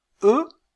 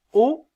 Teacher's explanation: si je dis e je sens que ma langue est un peu plus en avant quand je dis o elle est un peu plus en arrière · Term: voyelle postérieure